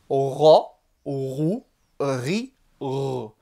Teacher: comme un R français, mais emphatique, grave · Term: le roin